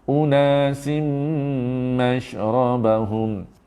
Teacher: Bila dengung bukan sekadar masuk hidung, tahan di hidung 2 harakat. Unasim masuk hidung, tu 2 harakat dan bersedia seterusnya rapatkan mulut kerana nak masuk mim bersabdu.